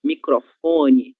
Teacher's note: nós vamos ter a sílaba tônica fó